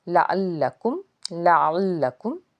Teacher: عین کو ادا کریں گے تو حلق سے آواز آئے گی، حلق کے درمیانی حصے سے، اور لام کے اوپر تشدید ہونے کی وجہ سے لام کو ہم 2 بار پڑھیں گے یہاں پہ۔